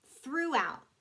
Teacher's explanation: th becomes f or v